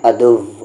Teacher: جیسے یہاں پر ایک آیت ہے اِنَّهُ لَكُمْ عَدُوٌّ مُّبِينٌ، یہاں پر جو ریڈ میں ہے واو کا مخرج لوگ کیا پڑھتے ہیں؟ عدو، یعنی جو اوپر والے دانت ہیں سامنے کے وہ نیچے والے ہونٹ میں ٹچ ہو جاتے ہیں، عدو، جو کہ غلط ہے